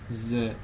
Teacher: produce the voiced sound say z to hear and feel some vibration